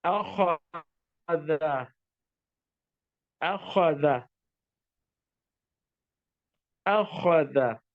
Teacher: You see, Hamza starts with a jerk.